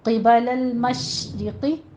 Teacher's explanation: قبل المشرقی، را مرقق ہو جائے گی، باریک پڑھنی ہے، اور قوف کو آپ نے پر پڑھنا ہے، کسرہ کی آواز آپ نے باریک رکھنی ہے. مشرقی نہیں کہنا، مشرقی، قوف زیقی.